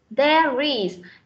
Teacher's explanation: Cái âm R này nối với âm is. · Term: nối âm